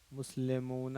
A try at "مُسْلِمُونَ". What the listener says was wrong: نہ نہ مسلمون لے نہیں لی